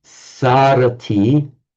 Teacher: loses the anuswara, loses the M, and is lengthened to a sa